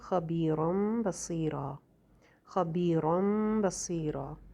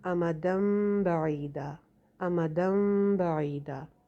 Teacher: تو رن یعنی تنوین کے بعد، دو زبر کی تنوین کے بعد آگے با گیا تو کیا ہوا؟ جو اس کے اندر چھپا ہوا نون تھا تنوین کے اندر، وہ میم میں بدل گیا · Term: اقلاب